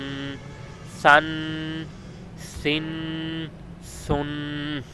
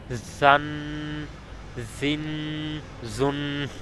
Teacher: سین اور زا کو ادا کرتے وقت سیٹی کی آواز نکالنی ہے